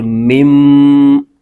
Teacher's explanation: تو یاد رکھیے جب ہجے کریں گے تو یہ نون جو ساکن بیچ میں آ رہا ہے اس کا نام لیں گے، اور جب ملائیں گے تو اس کی نون کی آواز نہیں آئے گی، بلکہ یہ میم اس میم کے ساتھ مل جائے گی